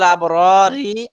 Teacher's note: এই যে এখানে গেছিল আবরারি আর এখানে হলো আবরার। এখানে ছিল প্রথম র মোটা, পরের র চিকন